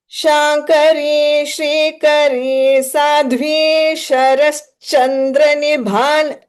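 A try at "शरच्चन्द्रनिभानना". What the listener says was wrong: So Sharash is happening. So it's not Sharash, Sharachandra, Sharach, double ch. So sh, normal regular sh, then r, then double ch. Chandra's ch, double ch. So Sharat Chandra.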